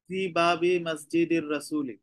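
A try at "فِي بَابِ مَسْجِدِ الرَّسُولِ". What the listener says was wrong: Excellent.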